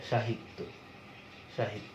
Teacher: তুমি যদি দন্ত স দিয়ে একটা শব্দ দেখো, দন্ত স দিয়ে, যেমন ধরো সাহিত্য, সাহিত্য, আমরা সাহিত্য বানান লিখছি কিন্তু দন্ত স দিয়ে, আর উচ্চারণ করছি তালবস্য দিয়ে, SH, যেটা সাহিত্য, সাহিত্য।